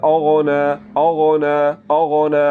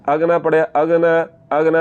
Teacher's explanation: غین کو پر کر کے پڑھا جاتا ہے